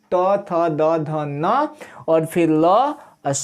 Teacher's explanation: ल जीभ सट रहा है दांत में